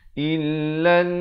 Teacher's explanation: di atas nun yang bersabdu ini kena dengung 2 harakat